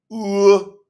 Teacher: It's elongated. That's why some people say it's a double U, because it's elongated U.